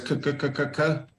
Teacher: So for example, if we think of the k sound, you can't really sing this. If you try and do a scale of k, it kind of goes k, k, k, k, k, but you're not really using your voice box at all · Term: unvoiced